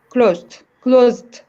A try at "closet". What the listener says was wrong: Closet. So 2 syllables. Okay, closet.